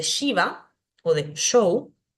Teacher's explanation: Tenemos la S palatal, que se pronuncia como ya, como si fuera una SH, como la S de Shiva o de show.